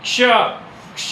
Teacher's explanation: ज्ञ ज और य आया कि नहीं आया? क्ष क और श पहले हल्का सा क बोलना पड़ रहा है। फिर श बोल रहे हैं।